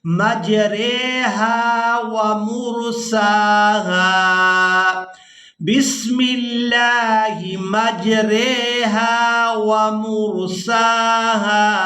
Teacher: یہاں را پر امالہ کریں گے۔